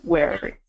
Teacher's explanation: the R doesn't get pronounced in February.